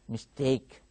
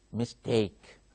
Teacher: there are two syllables and the second syllable is stressed